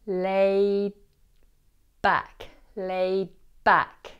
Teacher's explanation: doesn't release the D sound. Instead, your lips close ready for the B of back. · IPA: /ˈleı... ˈbæk/